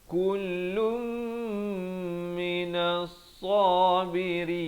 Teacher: Kalau nak wasal wazal kifli kullum minas sabirin. Dia kena baca dengung di sini, hidup masuk beserta dengung. Daripada kullun jadi kullum, dua harakat.